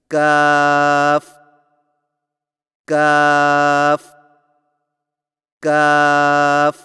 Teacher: کاف کی ادائیگی میں زبان کی جڑ کو کوے کے قریب تالو پر لگا کر باریک آواز میں پڑھیں، یعنی کاف کاف کاف.